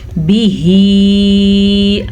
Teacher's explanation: ہا کے تلفظ کا دھیان رکھنا ہے، یہ حلق سے نکلے گا اور مد کو بھی کھینچ کے پڑھنا ہے تقریباً 2.5 سے 3 سیکنڈ کی طرح، 2 سے 3 سیکنڈ کے درمیان.